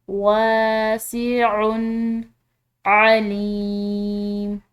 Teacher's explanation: आइन हलक से अदा करेंगे और यहाँ पर जो है ये या मद्दा, तो इसकी वजह से हम लाम को एक अलिफ के बराबर खिंचाव देकर पढ़ेंगे वासिउन अलीम।